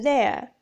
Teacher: Description of the articulation of /eə/ begins with a mid-open front position and moves to more open variety of /ə/ especially in word-final position as in there /ðeə/.